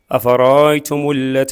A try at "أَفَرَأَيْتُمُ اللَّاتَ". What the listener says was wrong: أفرأيتم اللات المد بعد اللام.